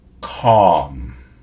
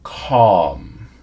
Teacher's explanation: especially American or Canadian English speakers we have a very light L sound a very light L sound in there we don't say calm